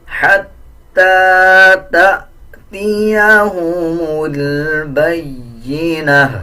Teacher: جب وقف کریں گے تو اس تا کو ہا میں کنورٹ کر دیں گے، آدھا ہا پڑھا جائے گا، اور تا کے اوپر جو پیش ہے اس کو بھی سائلنٹ کر دیا جائے گا۔